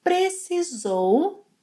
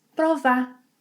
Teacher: we often omit the final -u sound of verbs in the past, and we may omit the -r sound of verbs in the infinitive form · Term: reductions